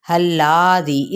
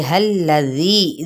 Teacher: अब इस हा की ज़बर को लाम के साथ मिलाएंगे। लाम की हरकत को हमने लंबा नहीं करना। हल्लादी, इसको कहते हैं लंबा करना, तो लंबा नहीं करेंगे।